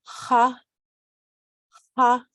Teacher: H, which is also pronounced further in back of your throat than in English H